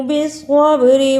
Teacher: صاد کو موٹا پڑھنا، با پہ قلقلہ کرنا۔